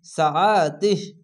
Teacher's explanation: এখানে খারজরে একালিফ টেনে পড়তে হয়, কিন্তু মিলিয়ে যদি পড়তে গেলে এখানে টেনে পড়তে হতো, তো এখানে থামতে হচ্ছে, তার জন্য শেষ অক্ষরে সাকিন দিয়ে শুধু তিহ বলে থেমে যেতে হবে। আইনটিকে মোটা করে গলা চিপে পড়বেন। সিন যাবার সাম, আইন যাবার আ, সা, তা হাজার তিহ, সাআতিহ।